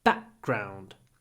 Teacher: Back is stressed, so what happens? We get a pause before the b.